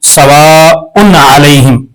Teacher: پر اظہار کر کے پڑھیں گے سواء علیہم، نہیں کریں گے، یعنی آواز ناک میں نہیں جائے گی، غنہ نہیں کریں گے